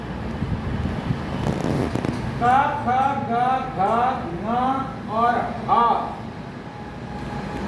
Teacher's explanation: ऐसे ही जो अक्षर कंठ से बोले जाते हैं उन अक्षरों को बोलते हैं कंठ्य